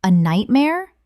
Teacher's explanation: Utilizing a rising intonation, this invites them to elaborate on their reasons.